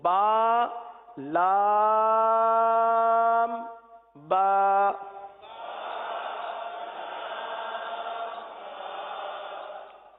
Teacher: لام کی میم جو ہے وہ ہونٹوں کے خشک حصے سے ادا ہوتی ہے، وہ حصہ جو باہر رہتا ہے. با دونوں ہونٹوں کے تر حصے سے ادا ہوتا ہے